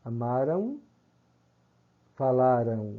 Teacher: na terminação em palavras como amaram e falaram ocorrem ditongos nasais decrescentes